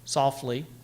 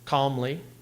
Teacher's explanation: the last line begins with a trochee softly stressed unstressed